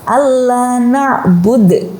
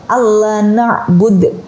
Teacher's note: meskipun akhirnya itu ada harokatnya, tetapi karena dia di akhir kalimat, kemudian ada waqaf atau akhir dari ayat, maka tetap dimatikan ya.